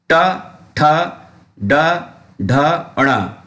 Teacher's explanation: ट ठ ड ढ ण, ये है मूर्धा, यानी मूर्धा, ये मूर्धा की सहायता से बोले जाते हैं, यानी जीभ ऊपर जाके वापस आ जाए।